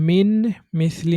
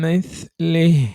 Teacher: মিন মিসলি না বলে উচ্চারণটা পুরোপুরি মিমের মত হবে